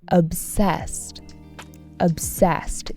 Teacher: Emphasis on the second syllable